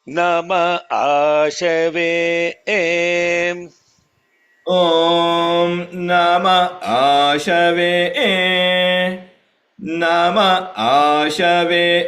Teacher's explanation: Now a short vowel is followed by a long vowel. That won't get a complete break.